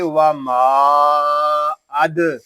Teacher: دال ساکن ہے، اس میں خوب کلکلا ظاہر ہوگا